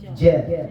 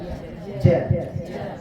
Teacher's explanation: ketika kita mengucapkan huruf jim mesti ada diiringi dengan udaranya